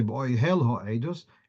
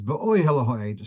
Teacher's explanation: So the stress is on the penultimate syllable.